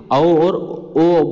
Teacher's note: कंठोष्ठ मतलब कंठ और ओष्ठ की सहायता से औ और ओ बोला जाता है।